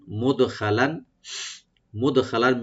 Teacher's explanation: দাল এখানে আমরা কলকলা করব, একটু ইকু হবে, খ একটু ডিপ হবে, আর লাং এখানে আমরা ইখফা করব, yani লাইট গুণা হবে এখানে।